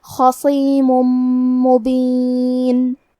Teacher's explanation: یہاں بھی حکم ہے ادغام بغنہ تو ہم تنوین کو میم میں ملا کے غنہ اور تشدید کے ساتھ یہ حکم کو ادا کریں گے · صاد بھی حروف التفخیم میں سے ہے تو ہمیں صاد کو موٹی آواز میں پڑھنا ہے. آخری میں میم پہ تنوین پیش ہے.